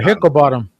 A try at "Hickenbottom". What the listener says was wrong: Hicken, not Hickle.